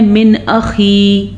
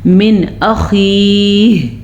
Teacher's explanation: خا جو ہے اس کو موٹا کر کے پڑھیں گے اور ہا کے تلفظ کا بھی دھیان رکھنا ہے کہ ضرور گلے میں سے اس کی آواز نکلے · خا اور یا کے بعد ہا کی آواز بھی وقف میں نظر آنی چاہیے